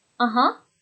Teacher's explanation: That goes up at the end as well, that rising intonation